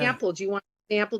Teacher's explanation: It's flat vowels, Chicago, and especially Rochester has a flat A.